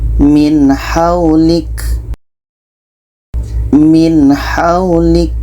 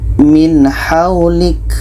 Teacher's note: nun jelas, ha jelas, dan tidak ada dengung. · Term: izhar halki